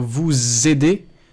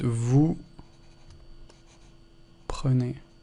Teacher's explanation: You don't hear an S or a Z in the second time.